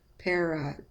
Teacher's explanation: In the word parrot, you see the upside down E. Again, that's the schwa sound.